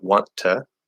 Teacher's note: you stop the first T, right? Because the T at the end of a word can be stopped or held, and then push out the second T in to, want to. Or you can, in this particular special case, you can use the NT plus vowel rule, even though there's two T's.